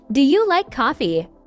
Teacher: that's a good point for yes or no questions you're voice should go up at the end